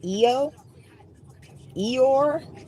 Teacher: The interjection Io, I-W in Greek, is pronounced either with two syllables, a short I and a long O